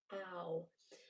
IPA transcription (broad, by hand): aʊ